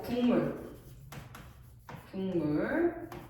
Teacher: 뒤에 있는 미음이 비음이 앞에 있는 기억에 영향을 줘서 기억을 이응으로 바꾼데. 기억을 이용으로 바꿨으니까 궁 물이 될 거 아니에요. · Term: 비음화